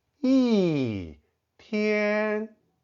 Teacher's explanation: Here, 天 is in the first tone. So, 一 changes to the fourth tone.